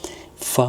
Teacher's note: simple ആയിട്ട് നമുക്ക് കിട്ടും എന്താണ് മേലെ മുൻപല്ലിന്റെ തലയും താഴെ ചുണ്ടിന്റെ പട്ടയും ഫാ എന്ന് പറയുമ്പോൾ തന്നെ മേലെ മുൻപല്ല് നമ്മുടെ ചുണ്ടിൽ വന്ന് തട്ടുന്നത് കാണാമല്ലോ